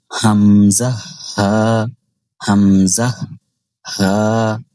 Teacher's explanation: ১ number মাখরাজ হলকের শুরু হইতে হামজা হা, অর্থাৎ এই দুইটা হরফ হলকের একেবারেই শুরু থেকে উচ্চারণ করতে হবে